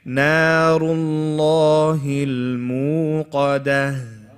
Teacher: Qaf is heavy. Dal is light, and then the ha at the end.